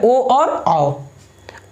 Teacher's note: कंठ से और होंठ दोनों की सहायता से जो ध्वनि निकलता है, ये जो स्वर निकलता है, उसी को हम क्या बोलते हैं, कंठोष्ठ स्वर बोलते हैं। ये कौन कौन है, दो है, ओ और आओ, ओ और क्या से निकलता है, ये कंठ से निकलता है, ठीक है।